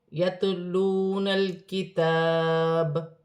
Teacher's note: میں زبر گر جائے گی اور با ساکن ہو جائے گی، وقف کی صورت میں با پر تھوڑا سا قلقلہ پیدا ہوا کیونکہ با حروف قلقلہ میں سے ہے